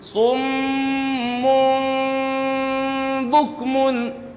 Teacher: فإذا نقول صم، أول مرة ننطي التشديد، واضح؟ ننطي التشديد للميم بعدين ننطي الإخفاء